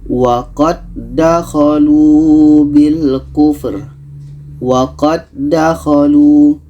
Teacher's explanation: Karena ini idgham mutamathilain. Jadi dal yang pertama kita masukkan ke dal yang kedua.